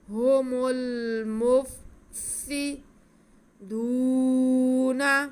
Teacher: آگے سین ہے، سین کے نیچے زیر ہے، سین کو ہم سیٹی کی آواز کے ساتھ پڑھتے ہیں۔ هم المفسدون، واو ساکن سے پہلے دال پہ پیش ہے تو یہ واو مدہ ہو گئی، اسے ہم کھینچ کے پڑھیں گے۔